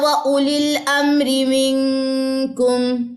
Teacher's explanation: یہ واو یہاں پہ سائلنٹ ہے، ٹھیک ہے. یہ واو نہیں پڑھا جائے گا.